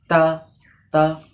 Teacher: তা বলার সময় জিভের আগার অংশটা উপরের দু দাঁতের গোড়ায় টাচ হয়